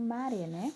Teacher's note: Maré é a última sílaba e é a mais forte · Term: oxítona